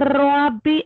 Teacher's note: اور اس میں ہلکی سی تکرار آئے گی